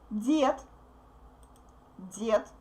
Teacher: Now d becomes voiceless t because it's in the end.